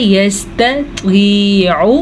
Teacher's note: اب اگر آپ پڑھیں گے یستطیع, تو آپ نے تو دونوں کو تو بنا دیا, یا آپ پڑھیں گے یستطیع, تو آپ نے دونوں کو تا بنا دیا. ہم نے تا کو تا ہی پڑھنا ہے اور تو کو پر پڑھنا ہے. تا نرمی سے, تو پر.